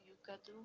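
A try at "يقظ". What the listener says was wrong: Yukaz. No, there is no vowel on zal. It is sakin. Yukaz.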